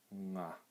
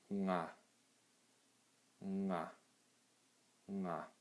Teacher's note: the way you pronounce it is it's almost at the back of your mouth